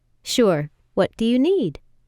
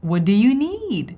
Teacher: she naturally kind of went up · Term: intonation